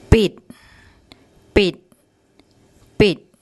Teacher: Okay, the bo blah, the short I vowel, it, and the door deck, which as an initial consonant it's a D, but as a final consonant it has an unreleased T sound